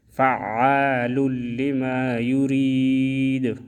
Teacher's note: دال میں پھر قلقلہ کریں گے، ساکن ہوگا تو ساکن میں قلقلہ ہوتا ہے، دال ساکن میں قلقلہ ہے